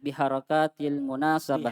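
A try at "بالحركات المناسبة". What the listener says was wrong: Biharokati. Ndak panjang.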